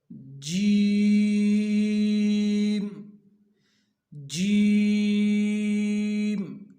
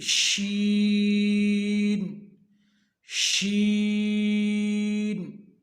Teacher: अब जीम, शीन और या, ये 3 हुरूफ हैं, इनका एक ही मखरज है। ये एक ही जगह से निकलते हैं, एक ही जगह से अदा होते हैं, ज़ुबान के दरमियान और तालु के दरमियान से अदा होते हैं। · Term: हुरूफ़ शाजरिया